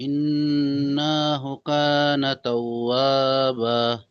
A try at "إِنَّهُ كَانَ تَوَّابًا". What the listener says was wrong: না, টান হবে না, ইন্নাহু। কানা তাও, ওয়াওর উপরে তাসদিদ আছে, ওয়াও দুবার উচ্চারণ হবে। ইন্নাহু কানা তাওয়াবা।